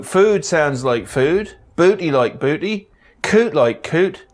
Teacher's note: In East Anglia, yods are dropped after every consonant.